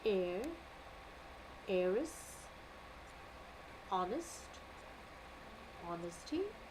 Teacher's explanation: in all these list of words, my H is silent